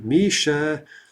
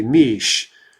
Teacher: is that if you drop the ah or the yah well basically you're dropping the vowel at the end you're dropping the ah